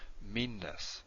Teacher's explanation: You hold this longer. You don't say it twice, but you hold it longer. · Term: double N